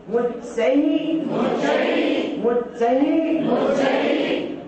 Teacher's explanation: विसर्ग के स्थान पर आप आधे हा का उच्चारण करिए।